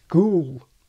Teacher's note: before a final L GOOSE didn't front, and the old quality survived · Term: GOOSE fronting